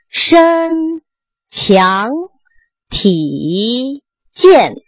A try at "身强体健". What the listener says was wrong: 身 字 短 ， 身 不 是 身 ， 到 这 就 不 走 了 。 身 来 。